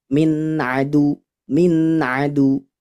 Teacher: Maka ketika dibaca jelas tidak dengung yang lama. Dengungnya hanya sedikit saja menunaikan huruf nunnya, nun sukunnya, tawasud. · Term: idhar halqi